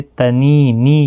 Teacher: یا مدہ ہے، ایک الف کی مقدار کے برابر کھینچ کر پڑھیں گے